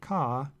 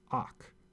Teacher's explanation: it's pronounced kha not auch because the syllable must begin with a consonant